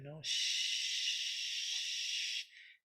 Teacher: Doesn't need vocal cords.